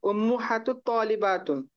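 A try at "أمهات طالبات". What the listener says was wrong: उम्महात, उम्मो नहीं पढ़ेंगे, उम्मा मीम के ऊपर फिर जबर आ जाएगा। उम्महात तालिबात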